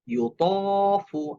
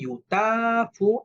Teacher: তটা মোটা হরফ, এই জন্য ইউতফু। আমি যদি বলি ইউতাফু, এটা ভুল উচ্চারণ, কারণ তটা মোটা হরফ।